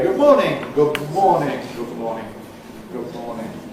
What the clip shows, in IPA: ˈgʊb ˈmɔːnɪŋ